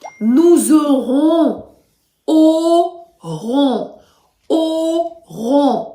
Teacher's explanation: два о звуки так два о тільки другий ще й носовий